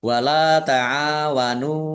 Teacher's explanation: Ain fathah alif mad thobi'i. Nun dumah wau sukun juga mad thobi'i. Masing-masing dibaca panjang dua harakat.